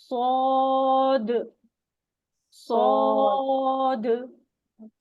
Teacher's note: और सौद में क्या होगा, हैवी लेटर है तो जबान की जड़ पीछे से उठ जाएगी और उसकी आवाज पुर आएगी, मोटी आएगी